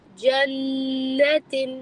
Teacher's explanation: اس کو جنات تب پڑھیں گے جب اس کے اوپر چھوٹا سا الف ہوگا یا لمبا ایک پورا الف لگا ہوا ہوگا. یہ ابھی نون کو آپ نے شارٹ پڑھنا ہے لیکن غنہ کے ساتھ پڑھنا ہے کیونکہ نون کیا ہے شدہ ہے.